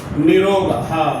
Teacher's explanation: इस र का लोप हो जाएगा और पूर्व नी का दीर्घ हो जाएगा